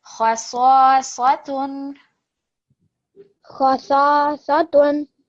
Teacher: Make the kha a bit shorter because it was more than 1 second.